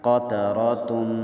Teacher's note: قاف زبر قا، تا زبر تا، قات، را زبر را، قاتر، تا دو پیش تن، تا دو پیش تن پر غنّہ ہے۔ قطراتن، وقفاً قطر۔